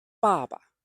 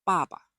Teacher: Clear on the first ba and then short and low on the second ba.